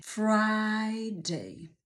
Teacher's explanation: pojawia się długie i wyraziste i usta muszą być szeroko otwarte i powtórz pięć razy Friday Nie bój się szeroko otworzyć ust